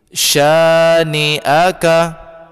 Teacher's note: huruf shin berbaris atas, bacanya sya, setelahnya ada alif, maka dipanjangkan 2 harkat.